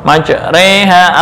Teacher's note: yang asalnya fathah ya dibaca antara fathah dengan kasrah majreha atau mengimalahkan Alif yang jatuh setelah ro ke ya